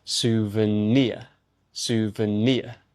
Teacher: And the final word is souvenir. The stress is on the final syllable.